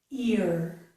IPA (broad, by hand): ɪɹ